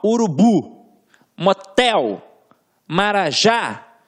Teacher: a gente tem a última sílaba como tônica